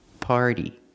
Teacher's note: It's a little faster than a clear D. It's a fast D.